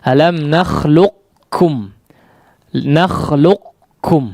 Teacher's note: memberikan sifat isti'la untuk menandakan bahwa di situ ada huruf qaf. Namun dalam riwayat Hafiz an Asim ya, baik dari jalur Syatibiyah ataupun Thayyibatun Nashr, yang lebih masyhur adalah diidghamkan secara kamil ya, diidghamkan secara sempurna.